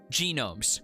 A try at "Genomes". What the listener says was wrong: Gnomes. Gnomes. The E is silent.